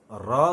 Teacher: र ध्वनि में जीभ जोर से हिलती है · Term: लुंठित